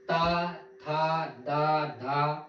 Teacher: वह व्यंजन जिसके उच्चारण से हमारी नोक ऊपरी दांतों को स्पर्श करती हो, ध्यान रखना, उसे बोलते हैं दंत व्यंजन। · ऐसा प्रतीत होगा कि आपके जो जीभ की नोक है ऊपरी दांतों को स्पर्श करती है, उसे बोलते हैं दंतस्थ व्यंजन।